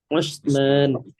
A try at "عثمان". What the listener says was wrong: Nah, pakai huruf ain ya. Utsman gitu. Utsman.